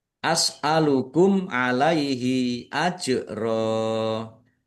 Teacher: Mim sukun bertemu dengan huruf ain. Bacaan izhar syafawi dibaca jelas.